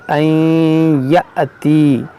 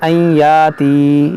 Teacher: ये हमज़ा साकिना है, तो यहाँ पर झटका देकर पढ़ा जाएगा